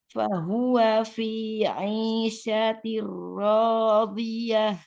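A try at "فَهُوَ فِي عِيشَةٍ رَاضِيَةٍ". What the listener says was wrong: Jangan dipisah wanya, jangan fahuwa fi gitu enggak, langsung wanya wa fi. Fahuwa fi. Fahuwa fi. Jangan fahuwa, fahuwa fi. Masih naik gitu. Masih fahuwa gitu. Fahuwa fi. Masih agak naik ya bunyinya. Itu pendek semua itu. Fahuwa itu langsung nyambung baru di fi. Fahuwa fi.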